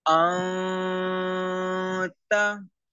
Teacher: तो नून सकीन की आवाज को हम छुपा रहे हैं और साथ गुन्ना भी कर रहे हैं। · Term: इख्फा